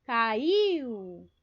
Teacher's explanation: percebam que o I é mais forte que o U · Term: semivogal